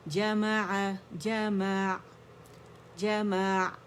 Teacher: توسط جب عین کا ہوتا ہے تو آواز وسط اللسان تک جاتی ہے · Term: عین کے توسط